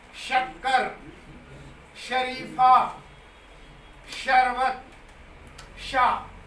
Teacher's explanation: जब ये तालु की ओर मुड़ता है, तालव्य बनता है, तो शा हो जाता है।